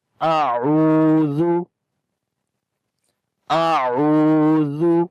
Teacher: اعوذ، تو کوشش کرنی ہے کہ دونوں کی جو آواز ہے وہ مختلف کر کے پڑھیں۔ اعوذ، ذال کو نرم پڑھیں گے اور عو کو لمبا بھی کریں گے، واو مدہ ہے۔ مدہ کا مطلب ہوتا ہے لمبا کرنا، واو کے اوپر جزم جب آئے اور اس سے پہلے جب پیش ہو تو وہاں پر لمبا کرتے ہیں۔